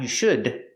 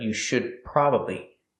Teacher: The D in should is a stop D. Don't release the D. Not you should, but you should probably.